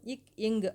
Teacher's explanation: நாவின் முதற்பகுதி அன்னத்தின் அடிப்பகுதியும் பொருந்துவதால் பிறக்கின்றது